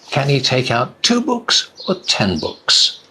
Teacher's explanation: The voice goes up and then down on the last one.